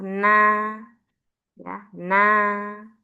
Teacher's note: ujung lidah kena langit-langit atau gusi atas huruf na